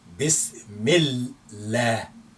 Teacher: So we say bismillah, and that lam, make it light because we have kasra before it